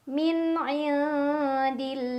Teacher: Karena ada lam jalalah yang berbaris fathah berdiri. Cara bacanya lam jalalah dipanjangkan 2 harokat. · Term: mad tabi'i